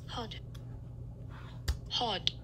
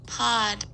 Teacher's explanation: maybe you just produce the vowel in hod, not as a low back unrounded vowel